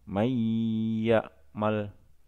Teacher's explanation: huruf nun dimasukkan dengan dengung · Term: Idgham Bighunnah